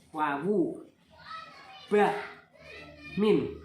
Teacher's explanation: huruf wawu, mim, ba itu huruf yang keluar hanya saja dari pertemuan antara 2 bibir